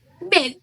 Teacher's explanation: Lalu ada e pada bed, lidah posisinya di tengah depan